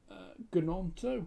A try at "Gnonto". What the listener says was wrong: Nonto. Because it's a silent, you're right, but it's a silent G. It says Gnonto, but it's Nonto.